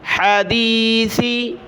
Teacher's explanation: ہا کو گلے سے نکالا سا پر زبان نکالی